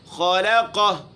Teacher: خا موٹی لام باریک قاف موٹا